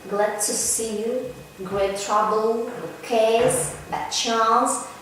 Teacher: in the sequence of two plosive consonants, the former loses its plosion. For example, let's take words glad to see you, great trouble, good case, bad chance. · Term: loss of plosion